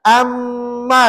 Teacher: Ha janganlah cepat sangat bunyi. Kena bunyi dengung dua harakat.